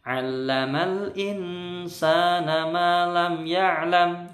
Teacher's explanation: mim atau ketemu baik Kalau tidak ketemu mim tidak ketemu bak maka mim sukun ini bacanya izhar syafawi tidak boleh dengung atau bacanya jelas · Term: idhar syafawi